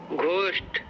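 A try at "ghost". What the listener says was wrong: घोस्ट गलत हो गया। घ है नहीं तो उसको ग पे लाएंगे तो पढ़ेंगे क्या? गोस्ट।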